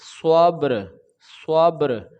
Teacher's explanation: با کو جنبش کے ساتھ یعنی کہ آواز لوٹ کر آئے گی، یہاں پہ قلقلہ ہوگا، جنبش پیدا ہوگی